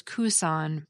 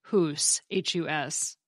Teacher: the k sound had dropped off, leaving us with just hus.